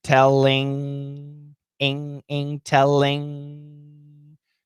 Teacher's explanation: the tip of the tongue doesn't touch. The back of the tongue touches back in the mouth.